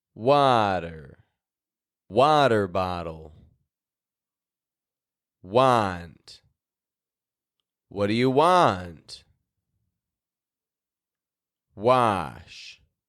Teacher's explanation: ah is heard when a follows w w sounds like ah most often when beginning a word consider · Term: broad a